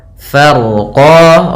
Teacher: ro-nya dibaca dengan tebal karena huruf ro yang dia sukun sebelumnya fathah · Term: ro-nya tebal